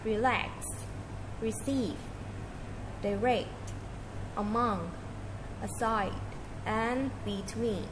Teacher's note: In most two syllable words and prepositionsThe stress is on the second syllable